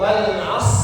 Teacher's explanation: Suaranya mengalir ya. Jadi jangan langsung diqalqalahkan. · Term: huruf shad